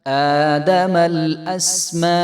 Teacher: حمزہ کے اوپر کھڑا زبر ہے، تو اس کو 1 الف کے برابر ہم لمبا کریں گے